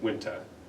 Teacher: So just taking out the R noise. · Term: soft R